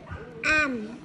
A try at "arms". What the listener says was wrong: À, có chữ S phải đọc thành arms.